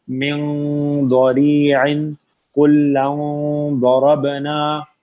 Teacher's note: نون کی اخفا کرتے ہوئے آپ کی زبان ضاد کے مخرج پہ ہونی چاہیے